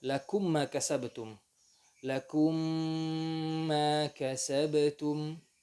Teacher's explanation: lakum mim sukun kemudian mim setelahnya juga mutaharrik, mim dan mim ya. Idgham saghir, idgham mimi. Lakum ma kasabtum dengan gunnah, dimasukkan hurufnya dengan gunnah.